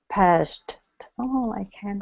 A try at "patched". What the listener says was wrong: But you added a third T in there. Okay, so all right, so patched. Patched.